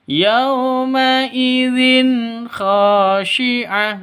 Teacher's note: tanwin bertemu dengan kha itu cara bacanya jelas, terang. Kenapa? Karena bacaan izhar halqi.